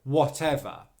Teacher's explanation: And then here's a really, really useful tip to make sure that you're not overstressing the final syllable, which is a schwa sound and unstressed, whatever. The final syllable is just the schwa sound, which means that it should be very quiet, very short, very relaxed.